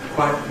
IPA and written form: kwaɪʔ (quite)